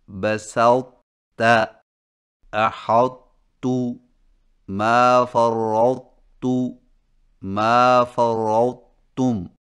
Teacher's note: ان 4 الفاظ کے پڑھنے کا طریقہ یہ ہے کہ طا کے موٹا پن کو ظاہر کرنے کے فوراً بعد تا باریک ادا کریں